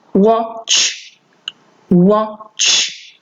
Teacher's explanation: you don't really hear that T